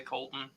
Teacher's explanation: you pronounce your own name I mean typically I'll say Colton I don't I don't use the T unless I am enunciating it